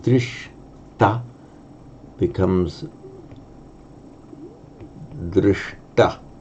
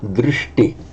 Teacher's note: wherever you get a sh plus a following t in a Sanskrit word, it mutates to a shta, both subdotted retroflex